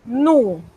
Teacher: Noten que la S me la he comido, como decimos en buen panameño. Ella no se pronuncia a menos que encontremos un caso especial que más tarde se los voy a explicar.